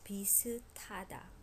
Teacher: S and 하, because when it's the last sound in the syllable, it becomes t. And the t and ha together becomes totally aspirated.